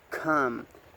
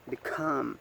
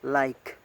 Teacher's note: The cat sound, the initial example is come, the middle example is become, and the final example is like. And the voicing is voiceless, and the place of articulation is velar.